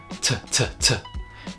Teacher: You can feel the puff of air that comes out of your mouth when you say it.